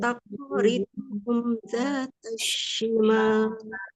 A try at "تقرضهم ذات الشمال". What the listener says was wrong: Hati-hati huruf qafnya qalqalah ya. Coba diulang sekali lagi.